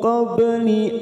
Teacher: ada huruf ba sukun, qalqalah sugro kita pantulkan